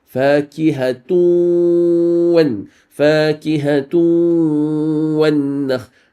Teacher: The sound of the nun فاكهة, the n at the end disappears, fully merged into waw. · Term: idgham bi ghunna